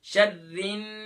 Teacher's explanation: taking the voice into nose just 2 second, یعنی کہ 2 second کے لیے آواز کو ناک میں چھپانا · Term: غنہ